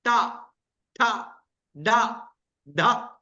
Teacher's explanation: पीछे वाले मसूड़े पे जीभ टच हो रही है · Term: मूर्धा